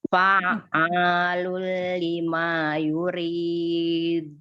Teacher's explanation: Ri-nya dibaca tipis karena kasroh